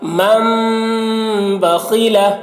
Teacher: دیکھیے میم کو میم سے ملا کر ہم ہجے کر رہے ہیں، یہ نون ساکن کو نہیں پڑھا جا رہا ہے، نون ساکن کو میم سے بدل دیا جا رہا ہے تو نون کو نہیں پڑھا جا رہا۔ · یہاں پر میم میں غنہ بھی کر رہے ہیں، غنہ اور اخفا دونوں۔